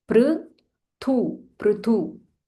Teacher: This is pr, not pru, it is pr